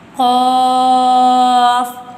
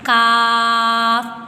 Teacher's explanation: کاف جس پہ 2 نقطے دیے گئے ہیں ان کو پر یعنی موٹا پڑھیں گے، جبکہ دوسرے والے کاف کو باریک پڑھیں گے